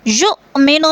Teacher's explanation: حمزہ ساکن ہے، جھٹکا دے کر پڑھیں گے۔